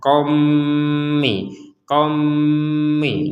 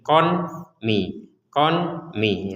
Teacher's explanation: Jadi di rongga hidung kita dengung dulu, baru kita membaca harokatnya mim. · Kita membacanya di sini karena digabungkan dengan mim ya, bertemu dengan mim. Maka Fathatain ini atau tanwin ini kita masukkan kepada huruf mim sehingga kita membacanya kommi, kommi.